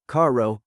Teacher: Just a single light tap of your tongue against the roof of your mouth. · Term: soft R, The soft R